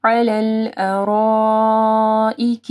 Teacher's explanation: علی الارائک مد ہے، اس کے بعد حمزہ ہے تو 4 سے 5 حرکات کے برابر اس کو لمبا کرنا ہے